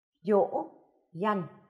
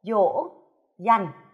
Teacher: tiếng dỗ có thanh ngã khi đọc các em nhớ kéo dài hơi